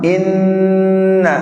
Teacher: ada nun musyaddada, nunnya ditahan dengung